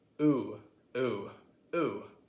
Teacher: Now the final difference I want to talk about today is the difference between our O sounds. So in most American accents, barring some Southern accents, the O sound is produced more at the back of your throat.